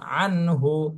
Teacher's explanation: নুন সাকিনা তানবিন যেখানেই থাকবে তার পরের হরফ খেয়াল করতে হবে, তাহলে গুন্না হবে কি হবে না এটা আমাদের সামনে ক্লিয়ার হয়ে যাবে। এখানে নুন সাকিনের পরে হা, এটা হলো ইজহারের হরফ, এই জন্য স্পষ্ট এই নুন সাকিন স্পষ্ট করে পড়তে হবে।